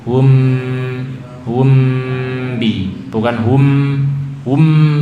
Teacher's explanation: kita panjangkan hunahnya ya temponya dipanjangkan home menutup sempurna tapi ringan jangan tertekan jangan mengerutkan bibir home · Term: Ikhfa Syafawi